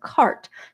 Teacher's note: She doesn't say court, she says cart. So she's using the low vowel plus postvocalic R.